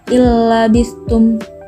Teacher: terdapat huruf nun di sukun bertemu dengan huruf lam cara membacanya memasukkan huruf nun di sukun ke huruf lam tanpa mendengung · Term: idgham bilagunnah, idgham bila gunnah